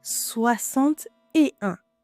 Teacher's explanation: we didn't pronounce the x sound it sounds like x was an s